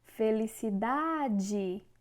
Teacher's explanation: O da é a sílaba mais forte, ou seja, é a sílaba tônica. E é paroxítona.